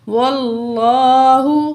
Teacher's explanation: جب بھی زبر یا پیش ہوگا تو ہم ہیوی پڑھیں گے لفظ اللہ کو